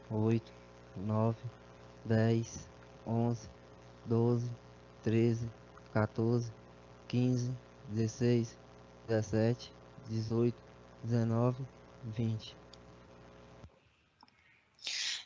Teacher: soprosidade, que é uma emissão de ar que a gente consegue escutar junto com a voz, mas em grau leve